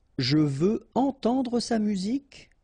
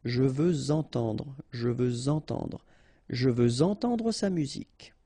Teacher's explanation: Even if we've got this X at the end, well, with the liaison it will sound like Z.